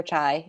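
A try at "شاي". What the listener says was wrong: Shay. It's pronounced, she taught us it was pronounced Shay. It's spelled like chai, but it's pronounced Shay.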